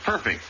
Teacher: the word is perfect accent on the first syllable always whether an adjective or a transitive verb eight the chief justice